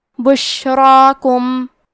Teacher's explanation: حرف را کی حرکت ہے زبر، تو حرف را کو موٹی آواز میں پڑھیں گے. کیونکہ اس پہ کھڑا زبر ہے تو یہاں مد الف ہے، تو ہمیں مد الف کو بھی بھاری آواز میں ادا کرنا ہے